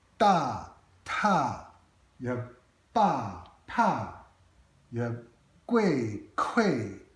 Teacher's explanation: So all of these are only differentiated by aspiration. And this is a tricky thing with Pinyin, because in Pinyin you spell these sounds with a D.